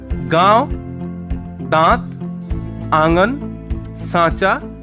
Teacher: अनुनासिक, जिसका चिन्ह चंद्र बिंदु है। ऐसे स्वरों का उच्चारण नाक और मुंह से होता है और उच्चारण में लघुता रहती है।